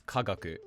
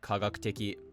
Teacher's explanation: So if you have a word that has an accent drop such as kagaku and you add teki to the end, you'll be left with kagakuteki. Adding teki to the end of any word overrides the original pitch accent and turns it heibon.